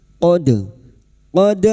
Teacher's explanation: dal sukun yang mati asli di tengah kalimat qalqalah sugroh. Jangan lupa dipantulkan.